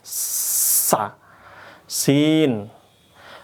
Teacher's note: Kalau tadi awal sinin itu lidah kita turun ke bawah. Nanti akan makhrajnya dia turun lidahnya ke bawah ke gigi belakang, gigi bawah